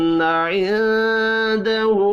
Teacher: نون ساکن کے بعد دال ہے، اخفاء حقیقی ہوگا